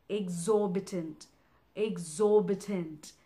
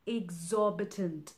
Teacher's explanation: exorbitant it basically has four syllables X or big tent exorbitant the stress is in the second syllable